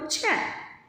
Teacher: ಛ ಅನ್ನೋದು ನಾವು ಒತ್ತಿ ಹೇಳ್ತಾ ಇರೋದ್ರಿಂದ ಇದು ಮಹಾಪ್ರಾಣ ಅಕ್ಷರ